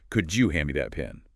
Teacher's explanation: Instantly, the source shares other common patterns like, "Could you hand me that pen?" Often becomes, "Could you hand me that pen?" The D and Yi sounds blend into a J sound · The D and Y sounds blend into a J sound.